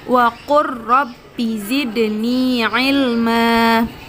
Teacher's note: huruf lam sukun bertemu dengan huruf ro, langsung dibaca huruf ro-nya seolah-olah huruf lam tidak ada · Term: idgham mutaqaribain